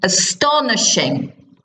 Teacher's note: four syllables so it's the push on the second one